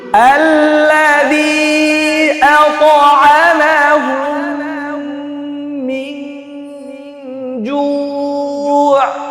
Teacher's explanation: পর মিম আসলে কি হবে ইদগামে ইদগামে মিথলাইন ইদগামে এখানে মিম একটা মিম আরেকটা মিমের ভিতরে ঢুকাই দিতে হবে মিশাই দিতে হবে